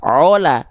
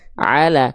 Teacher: kalau vokalnya a kayak huruf ain kan enggak dibaca ola, tapi dia dibaca ala. Maka vokal a tandanya tipiskan fathahnya gitu.